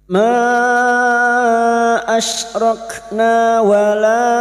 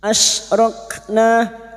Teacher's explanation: Huruf shin makhrajnya ada pada wastul lisan yaitu tengah lidah. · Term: huruf shin sukun